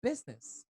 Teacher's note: It's a combination between your S and your Z, not pure Z.